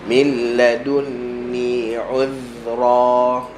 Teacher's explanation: Huruf first kali makhraj, sifat datang selepas makhraj. Okay, makhraj dulu, hujung lidah, hujung gigi atas.